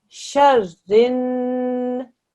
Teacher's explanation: Shar, this has to be joined together, press down on the ra. And then ra and the noon join, press down on the noon for 2 seconds. Sharin, and then na and the fa join.